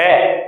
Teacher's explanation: ये पूरे का पूरा गले से होकर निकलता है, इसलिए इसे स्वरयंत्र मुखी या काकल्य व्यंजन भी कहते हैं।